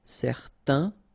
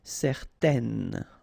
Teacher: Okay, so in that case, certain, it's quite interesting because you've got this A-I-N together, and then they will produce this un sound. Okay, so it's nasal in your nose, un. Okay, if you add this at the end, then it will change the thing, and then you will pronounce it n.